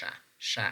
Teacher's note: Sha Sha as in ship this is voiceless means that when we producing this sound we perceive less vibration